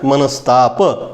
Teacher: विसर्गानंतर त आलेला आहे आणि त्यामुळे विसर्गाच्या ऐवजी स येतो आणि संधी होतो. इथं विसर्गाच्या ऐवजी स येतोय, हा स या त मध्ये मिसळतोय आणि शब्द तयार होतोय मनस्ताप. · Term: विसर्गाचा स